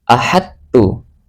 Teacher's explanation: Cara membacanya dia tidak boleh dikolkolahkan, tapi langsung dimasukkan ke huruf ta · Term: idgham mutajanisain